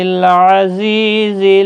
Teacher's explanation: زا سختی والا حروف صفیریہ کا حرف ہے